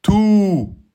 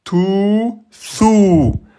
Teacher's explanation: Le W prolonge le son de la damma. Donc au lieu de dire thou, je dirais thou en deux temps. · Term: voyelle longue